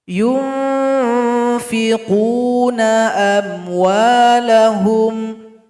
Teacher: Contoh nun sukun berjumpa dengan fa, maka dibaca dengung dan samar-samar, arahkan dengung samar-samar ini kepada tempat keluar huruf fa. Itunya bibir bawah berjumpa atau mendekat kepada ujung gigi seri paling atas. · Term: ikhfa hakiki